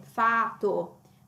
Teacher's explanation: la T singola qui viene dopo una A lunga